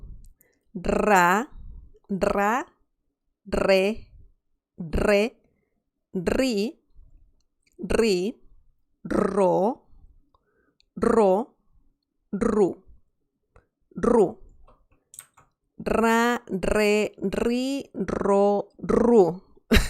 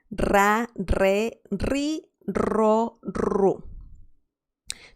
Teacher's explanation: you have to roll your R pretty hard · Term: the famous R sound